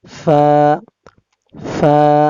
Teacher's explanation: নিচের ঠোঁটের পেট সামনের উপরের 2 দাঁতের আগার সঙ্গে লাগাইয়া ফা